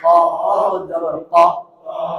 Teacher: জিহ্বার গোড়া থেকে মোটা ভাবে আদায় হবে